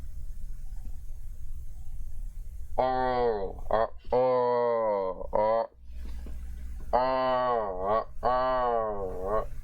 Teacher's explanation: the back, close, unrounded vowel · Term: turned M